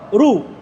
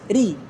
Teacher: Ini kalau dianya fathah atau dia dhamma, ra atau ru, tebal. Tapi kalau dia kasrah dia tipis, ri.